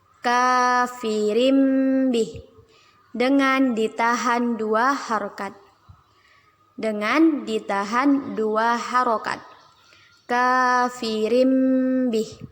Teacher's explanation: Kita ganti bacaan tanwin menjadi mim. Yang awalnya kafirin bih menjadi kafirim bih. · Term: iqlab